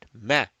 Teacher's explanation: See, we rounded the lam. Although meme is flat letter and meme with a fatha we are making it pretty flat, ma. But because this is a fatha, this is going to make the lamul jalala rounded.